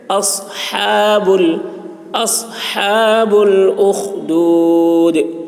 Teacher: ہا حلق سے ادا کریں گے